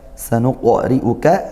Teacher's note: Sanuqri'uka ri kasrah, ra-nya kasrah maka dibaca tarqiq tipis